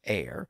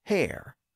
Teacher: the word air could be pronounced with a silent h like today but also with a pronounced H at the beginning